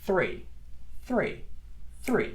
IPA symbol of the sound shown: θ